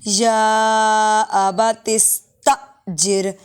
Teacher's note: حمزہ ساکن ہے جھٹکا دے کے پڑھیں گے